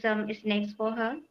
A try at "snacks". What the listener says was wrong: Snacks, not snakes.